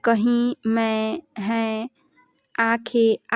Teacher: तो अनुनासिक स्वर इन स्वरों के उच्चारण में ध्वनि मुख के साथ साथ नासिक के द्वार से भी निकलती हैं।